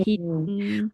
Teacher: Bunyi dia hin lama je dua harakat.